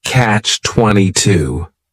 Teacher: noun the word catch is is just one syllable and then 22 is three syllables and the stress is on that final syllable